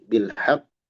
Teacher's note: di sini ada qalqalah ya di ba kemudian di qof kalau berhenti